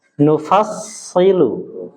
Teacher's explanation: Jadi huruf shad itu punya sifat sofir, suara tajam.